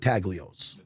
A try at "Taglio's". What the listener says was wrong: Nah. G's silent, like lasagna. Like lasagna, man. The G is silent like lasagna.